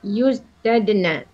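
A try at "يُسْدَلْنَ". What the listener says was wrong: Use dal. dal bukan dad, dal kan zala. bukan zala, lampunya lam. Kenapa tusdad? Bukan zala. bukan. Tus dal. Ibu tadi tusdadna. Tadi Ibu kesalahannya tusdadna. tusdadna zada.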